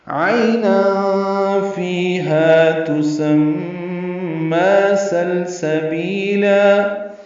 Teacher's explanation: عین وسط حلق سے ادا کریں گے، عی یا لین ہے، تنوین کے بعد فا آنے کی وجہ سے اخفا ہے۔